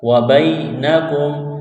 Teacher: یا ساکن سے پہلے زبر ہے، حروف لین یا ہے، اس کو کھینچنا نہیں ہے